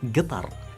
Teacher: And locally, we don't say Qatar. We actually replace the qaf with a G, so it becomes Qatar.